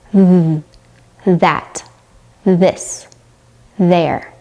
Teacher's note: Your tongue should be a little tense and you should blow out air without using your vocal cords. For the voice th sound, your mouth and tongue is in the exact same position, but this time you're engaging your vocal cords.